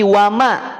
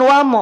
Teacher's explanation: Allah ketika didahului oleh fathah berarti tebal Mim ketika berharakat fathah karena mim tipis maka dibacanya vokal A